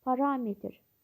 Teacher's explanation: Parametr vurğu ikinci hecadır